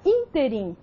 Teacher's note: Na palavra ínterim, a sílaba que se destacou foi a antepenúltima sílaba, in. Então, nós temos uma palavra proparoxítona.